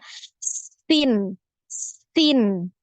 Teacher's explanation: huruf sin, nah ini jadi tajam karena suaranya lewat di celah yang sempit ya